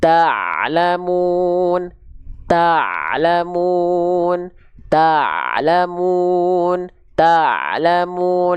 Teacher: Jadi huruf ain jangan sampai dia dilafalkan terputus suaranya. Pastikan ain dilafalkan dari bagian tengah tenggorokan kita.